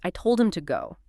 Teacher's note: The stress on him implies you told that specific person. Maybe contrasting with someone else you didn't tell.